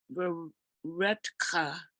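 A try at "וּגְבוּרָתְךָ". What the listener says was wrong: So ug vu ratacha, you were very close. under the resh is an ah. So under the resh has ah, so it's ratacha. Ug vu ratacha.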